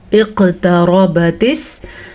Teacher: دونوں چیزیں اکٹھی۔ اقتربت، را ہم نے پر پڑھی کیونکہ را کے اوپر زبر ہے